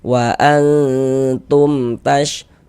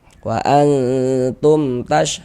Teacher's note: Kemudian didengungkan sehingganya di bagian wa'an itu kita tahan sejenak, kita panjangkan sebentar. Nah, kira-kira sepanjang 2 harokat.